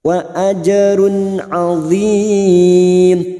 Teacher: duma tanwin bertemu ain idhar halqi dibaca jelas tanpa mendengung. Wa ajrun azim mat arid li sukun bertemu nyamat dengan huruf hidup yang dibaca waqaf 4 harokat kita panjangkan.